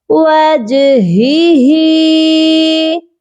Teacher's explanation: یہاں پر 2 ہاں ہیں اور دونوں ہا کی ادائیگی سینے والے حلق سے ہوگی